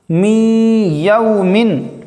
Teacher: نون ساکن کے بعد حرف جر معلول میں سے یا آنے کی وجہ سے غنہ کے ساتھ پڑھیں گے